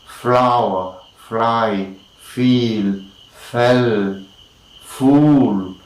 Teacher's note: we have the sound which is of course labiodental once again lower lip is the active articulator and upper upper teeth is the passive articulator